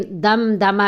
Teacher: اور میم دم دمہ میں آپ دیکھ رہے ہیں کہ میم ساکن کے بعد دال ہے، تو میم ساکن کی آواز ہم ناک میں نہیں لے کے جائیں گے، اظہار ہوگا